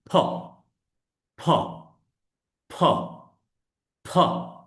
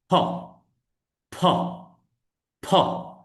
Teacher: দুই ঠোঁট বন্ধ করবেন এবং বাতাস বের করবেন